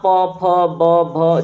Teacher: ठीक है, क्या हो गया, ओष्ठ्य। तो आप प, फ, ब, भ जब बोलेंगे तो दोनों होठ आपस में टच हो रहे हैं।